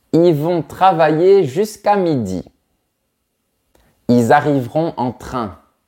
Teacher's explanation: très souvent on évite de prononcer le l de il